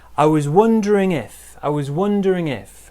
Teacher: big stress on wondering smaller stress on if